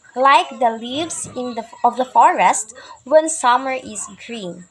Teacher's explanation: the first two syllables are unstressed and the third syllable is stressed. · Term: anapaest